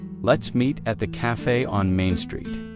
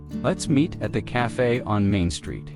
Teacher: Stress the location so it's clear where to go.